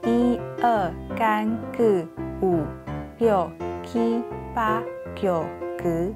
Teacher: 这是属于舌头后置▁backing▁的问题